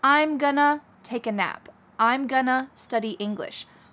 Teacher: I am becomes I'm. And then I'm pushing together or linking together going to, which often becomes gonna.